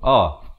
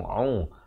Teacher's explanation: Hamzah makhrajnya di pangkal kerongkong a, kemudian ain di pertengahan kerongkong